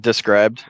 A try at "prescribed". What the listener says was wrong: Hey, you said described.